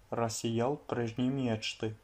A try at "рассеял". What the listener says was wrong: Рассеял прежние мечты. Рассеял, alors là, il faut bien placer l'accentuation. Toi, tu l'as mise sur le ya. Tu as dit рассеял. Alors que non, elle est sur le yé. Рассеял. Рассеял.